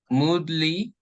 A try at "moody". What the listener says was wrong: There's no L. Moody.